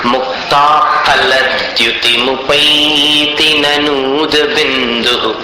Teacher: फ को दोनों ओठ मिलाकर उच्चारित कीजिए।